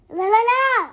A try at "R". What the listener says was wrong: Không phải là L. R. R. R. R. R.